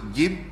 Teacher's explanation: Jim ada jahar bila kita sebut Jim angin tak keluar